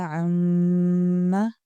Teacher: لمبا کرنے کا طریقہ ہے عَمَّ، دونوں ہونٹوں کو ملا کر تھوڑا سا لمبا کریں گے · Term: شد